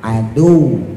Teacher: tulisannya adu tapi waw yang keduanya kemudian ditahan, jadi jangan langsung dimatiin